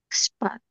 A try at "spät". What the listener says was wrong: এটা হচ্ছে এ umlaut, sorry আ umlaut হচ্ছে এ উচ্চারণ হয়, তাহলে এটা স্পেট। স্পেট।